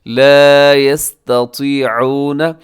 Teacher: اب یہاں پہ تا اور طا دونوں اکٹھے آگے ہیں، تا باریک طا موٹا